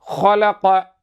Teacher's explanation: அடுத்த எழுத்துஹ ஹவினுடைய மகரஜை சொல்கிறார்கள் தொண்டையின் மேல் பகுதியில் ஹ உண்டாகிறது. · ஹாவுடைய மஹ்ரஜி சொல்கிறார்கள் தொண்டையின் மேல் பகுதியில் ஹா உண்டாகிறது. உதாரணம் ஹலக மின் அதுனல் ஹல்க, தொண்டையின் மேல் பகுதியிலே ஹா உண்டாகிறது.